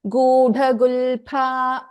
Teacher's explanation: the Pa here is the Mahaprana. Pa, pa. We don't pronounce this as fa like in other languages. So this is pa.